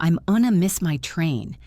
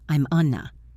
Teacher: Going to became unna